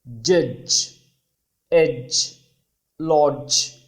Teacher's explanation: డా sound plus జా sound అండి. రెండు కంబైన్ అయిన సౌండ్ జా అంటాం.